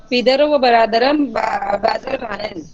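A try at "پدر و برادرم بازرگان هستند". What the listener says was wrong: اس کا نون دال لگا دیا ہستان کا.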